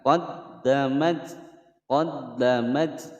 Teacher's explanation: Ta taknis yang menyandang harokat sukun, ada desisan angin atau hamas. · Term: ta taknis sakinah